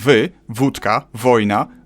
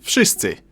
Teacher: W in wszyscy should sound like wy, wódka, wojna, but it seems to soften up to an F